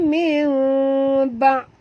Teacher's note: Hi min ba, nun mati bertemu ba, tukarkan bunyi nun mati kepada bunyi mim iqlab bacaannya dengung 2 harakat